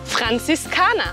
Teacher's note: La primera R gutural. La Z fuerte. Y la R al final como una A.